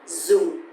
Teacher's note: because the tone mark here is dấu huyền, so it's going to be down a little bit.